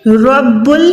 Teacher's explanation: ربک میں نے را کو موٹا ادا کیا